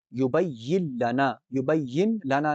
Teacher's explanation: یا کو لام سے جوڑنا ہے، نون سائلنٹ کرنا ہے